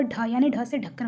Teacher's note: जो ढ है यह महाप्राण ध्वनि है और इसे घोष महाप्राण या मूर्धन्य उच्छित कहते हैं। यह भी ये जो ढ है यह मूर्धन्य के उच्छित द्वारा यह बोला जाता है।